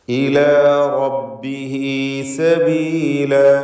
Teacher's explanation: റബ്ബിഹി എന്ന് പറയുമ്പോൾ റായിനും തഫ്ഖീമാണ്. സ്വരഭാരത്തോടെ തടിപ്പിച്ച് റായിനെ ഉച്ചരിക്കുക. ഇലാ റബ്ബിഹി സബീല, ഹ ഉദ്ദമീറിന് മദ്ദുസ്സിലത്ത് സുഗ്റ എന്ന ദീർഘമാണ്.